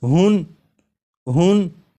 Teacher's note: یہاں پر ہا کے اوپر 2 پیش یعنی تنوین ہے، تو جب ہا کو پڑھیں گے تو آخر میں نون ساکن کی آواز آئے گی